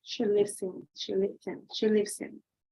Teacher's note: you have the S sound and the I connected directly